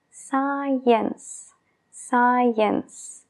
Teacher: Science. Allí se junta la S con la C al principio y simplemente se oye el sonido de la S